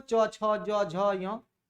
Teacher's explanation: तालु की बात करें तो ई और च वर्ग, ई वो तालु में सटता है